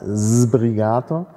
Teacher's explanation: Sbrigato vorne mit stimmhaften Z. Und natürlich ist das auch ein Archiphonem.